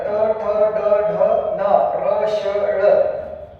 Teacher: ज्या वर्णाचा उच्चार करताना जिभेचे टोक मृदेला जाऊन भिडते आणि त्या ठिकाणी उच्चार होतो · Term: मूर्धन्य वर्ण